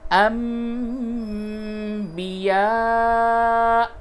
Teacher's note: نون ساکن کے بعد با ہے، قلب ہوگا، یعنی نون کی آواز کو میم سے بدل کر کے پڑھیں گے، اس لیے یہاں پہ میم بھی لکھ دیا گیا ہے.